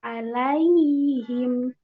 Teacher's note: Ya, kedengaran ya Umhat ya? Kedengaran suara ya-nya sampai ketemu huruf H. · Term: ar-rokhwah